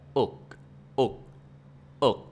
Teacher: And the C also like K, but in Vietnamese, we don't pronounce the K so strong, we keep it in.